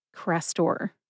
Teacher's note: I recommend that you emphasize both syllables equally. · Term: equal emphasis